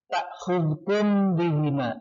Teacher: ikhfa syafawi, karena ada mim mati bertemu dengan ba